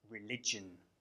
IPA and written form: rɪlɪʤən (religion)